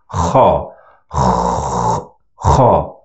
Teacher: But the sound comes from the throat, not from the nose.